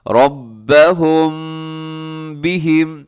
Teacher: را کے اوپر حرکت ہے، یہ موٹا پڑھنا ہے اپنے را کو